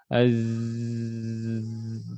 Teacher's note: Huruf yang lain huruf zai az ya itu suaranya mengalir bukan nafasnya